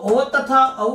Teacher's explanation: तो ओ तथा औ जो है इसका उच्चारण स्थान है कंठोष्ठ